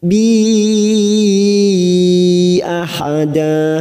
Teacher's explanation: kita panjangkan empat harakat Mad Jaiz munfasil karena ada Mad yang bertemu dengan Hamzah di lain kalimat